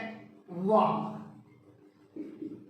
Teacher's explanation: इसका उच्चारण स्थान है दंत जमा ओष्ठ, इसीलिए ये दंतौष्ठ्य कहलाते हैं